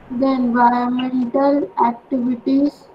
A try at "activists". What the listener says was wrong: Not activities, it is activist. Activists hote hain jo wahan kaam karte hain log.